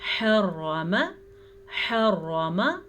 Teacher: ح کو واضح کرنا ہے، را کو پر پڑھنا ہے